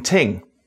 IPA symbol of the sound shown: θ